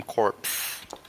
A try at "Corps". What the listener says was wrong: Corpse? That the P and S are silent on that because thanks English, or wherever we stole the word from. Yeah, it's the Crimson Corps, like the Corps of Engineers.